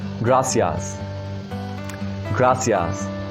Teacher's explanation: in latin america this soft sea is pronounced as s as of english